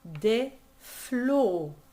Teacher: That's a very closed O.